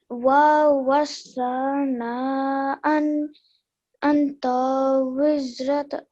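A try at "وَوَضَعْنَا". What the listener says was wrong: But remember, this letter is a da. Wa wada'na.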